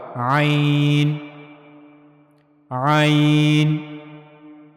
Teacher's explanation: عین کی ادائیگی کے لیے گلے کا درمیانی حصہ استعمال ہوگا،